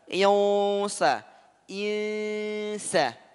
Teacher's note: Nun sukun bertemu dengan sin. Ikhfa haqiqi. Jangan sampai ketebalan.